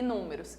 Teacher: Números tem 1, 2, 3, 4 sílabas e números. E a sílaba mais forte é a antepenúltima. Então, ela é acentuada por ser uma palavra proparoxítona.